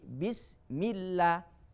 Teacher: Alhamdulillah, bismillah, ya, bismillah bukan bismi Allah, bukan, tapi bismillah, dibuang hamzanya, tidak dilafalkan alifnya atau hamzanya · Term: hamzah wasol